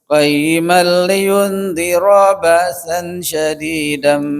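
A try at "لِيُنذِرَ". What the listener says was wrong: Punten liyundhiranya, roknya cepetin sedikit lagi.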